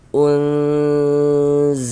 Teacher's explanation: dighunahkan sehingga di bagian unnya itu suaranya itu kita tahan, kita panjangkan sejenak